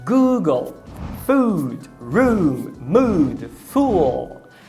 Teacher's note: A única diferença entre o U do português e esse U do inglês é que o do inglês ele tem uma duração um pouquinho maior. É por isso que na fonologia a gente coloca esses dois pontinhos logo após o fonema, que é para indicar uma duração extraordinária.